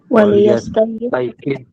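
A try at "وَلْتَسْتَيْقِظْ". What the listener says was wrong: wal tastaiqidh. Wal tastaiqidh. Nah, kalau yang di sini lamnya disukunkan ya, karena di sebelumnya ada harokat. Tapi biasanya tidak seperti itu. Biasanya lamnya disukunkan.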